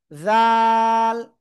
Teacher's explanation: জিহ্বার আগা উপরে দুই দাঁতের আগায় লাগাবো, লাগিয়ে আমরা 3 আলিফ টানিয়ে উচ্চারণ করব